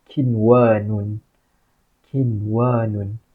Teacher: Waw tu adalah huruf idgham, tapi kita kena baca secara jelas. Sebab apa? Inilah izhar mutlak.